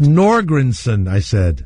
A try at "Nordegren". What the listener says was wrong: I don't think there's a son in it. Isn't it Nordegren?